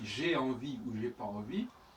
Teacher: Le E du jeu est très souvent éludé. · Qui d'ailleurs, entre parenthèses, correspond aussi à l'apostrophe. Parce que quand je dis j'ai envie ou j'ai pas envie, eh bien là, il n'y a pas le E du tout. Et j'ai pas envie, il y a aussi le N qui est supprimé. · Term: réductions